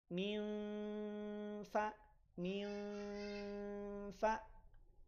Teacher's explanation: ujung gigi si atas itu sudah bersiap untuk ditempelkan kepada perut bibir bagian bawah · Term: ikhfa